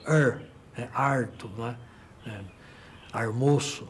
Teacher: o famoso R retroflexo que é típico da área caipira